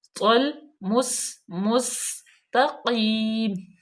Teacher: سین جو ہے حروف صفیریہ میں سے ہے، اس پہ بالکل سیٹی کی آواز آنی چاہیے